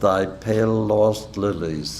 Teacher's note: the L in pale since is not followed by a vowel merges with the initial L of the word lost enhancing the duration and stress of the initial l in what